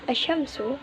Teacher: asyamsu terdapat hukum bacaan Idham Syamsiah dikarenakan alif lam atau alrif bertemu dengan salah satu huruf Syamsiah yaitu huruf syin cara bacanya mengidhamkan alif lam ke dalam huruf Syamsiah